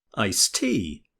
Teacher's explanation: Did you notice that the T sound in iced is also missing? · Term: elision